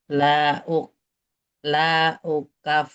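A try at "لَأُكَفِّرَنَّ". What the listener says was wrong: Lamnya pendek.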